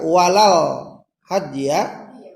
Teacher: ketika walal hadya, nah situ terdengar suara L, maka ini disebut dengan alif lam qamariyah